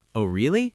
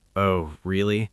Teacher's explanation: with a rising tone, it means I'm interested